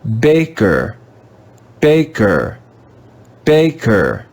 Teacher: can see the english letter e followed by the letter r this letter e is going to be read with the schwa sound